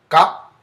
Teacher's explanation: continue on to the uvular plosive, which is going to be ga